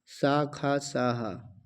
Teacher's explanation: ऊष्म जिनमें बोलने पर रगड़ निकलती है। गर्म वायु निकलती है।